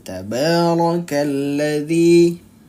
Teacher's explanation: rnya apa keadaannya tafkim atau tarqik tebal atau tipis jawabannya adalah ro berharakat fathah maka dia dibacanya tafkhim atau tebal ya tafkim atau tebal tabarakalladzi nah Jadi hati-hati dibacanya dia tebal · ra berharakat fathah maka dia dibacanya tafkhim atau tebal